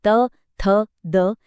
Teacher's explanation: त वर्ग की ध्वनियां जैसे त, थ, द, इनके लिए जीभ सीधे दांतों के पीछे लगती है